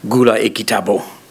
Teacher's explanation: if you have a command, buy a book, it'll be gula ekitabo, all low tone. I can put that declarative high tone, that boundary tone, the H there, that's in red, and say gula ekitabo, and that will mean buy a book. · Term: imperative intonation